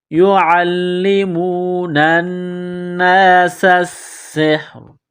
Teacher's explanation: نون مشدد ہے، غنہ کریں گے، آواز ناک میں چھپائیں گے، سین کو باریک کرنا ہے، سین میں سیٹی کی آواز پیدا کریں گے ، سین کو سین کے ساتھ ملانا ہے، یعلمون الناس السحر،